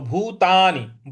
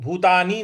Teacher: न पर छोटी की मात्रा है, तो भूतानि, भूतानी नहीं बोलना है, भूतानि इस प्रकार से बोलेंगे।